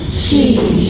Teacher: Jim sentuh langit kan >> tapi syin dengan ya memang keluar angin sebab dia tidak sentuh di langit